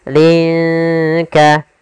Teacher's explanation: Cara membacanya samarkan linnya ke huruf kaf. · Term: ikhfa